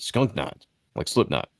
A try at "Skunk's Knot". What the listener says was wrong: Skunk's Knot. It's an S. Skunk's Knot.